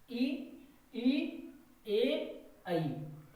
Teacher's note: Number 1 अग्र स्वर, जीव के आगे वाले हिस्से से बोले जाएं उनको कहते हैं अग्र स्वर। ई, ई, ए, ऐ, ये हो गए आपके अग्र स्वर।